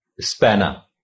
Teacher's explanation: چونکہ انگریز اس کا تلفظ اس طرح کرتے ہیں کہ آخر کے جو دو حروف ہیں یعنی ای اور آ، ان کا تلفظ ہلکی سی ہے کی شکل میں یا کبھی کبھی الف کی طرح ادا ہوتا ہے